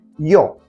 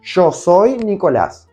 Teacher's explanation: in Argentina, Y plus a vocal is pronounced as sho, as in she in English